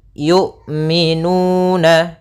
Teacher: Jahar yaitu tertahannya nafas kita, sedangkan syiddah yaitu tertahannya suara. Maka ketika melafalkan hamzah itu tidak ada nafas yang dialirkan dan tidak ada pula suara yang dialirkan, tapi dia suaranya tertahan dan nafasnya tertahan. Kemudian yu'minu, hati-hati jangan sampai terbaca dengan jangan dibaca dengan ain.